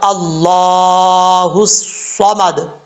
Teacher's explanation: اللہ کے لام سے پہلے زبر ہے، اللہ کا لام جو ہے اوپر پڑھا جاتا ہے۔ اور اس کے بعد ہے صاد، ہا کو جب صاد سے ملائیں گے الف لام بیچ میں گر جائے گا، الصمد، صاد حروف مصالحہ میں سے ہے، پر پڑھا جائے گا۔